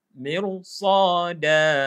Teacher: Mirsada. Ni kalau ikutkan dia ra ni kita nipis tapi dia dekat dengan huruf isti'la maka tebal.